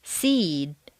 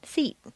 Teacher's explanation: at times what appears to be a single syllable word will have a longer sound to it seed takes longer to say than feet